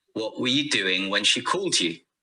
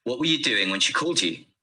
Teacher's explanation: the you on the end is not stressed but not weak either because it's the last word of the sentence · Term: weak forms